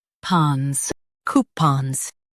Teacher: Stress coo and keep pons quick.